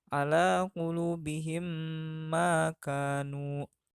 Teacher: mim sukun dimasukkan atau digabungkan dengan mim di depannya dan berdengung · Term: idgham mimi